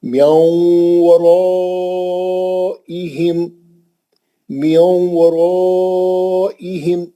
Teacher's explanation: آدھا نون آدھا واو. میاؤں, ایک دم منہ گول کر دیں گے واو کے واسطے